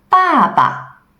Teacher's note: neutral tone is shorter and softer like the sound you sigh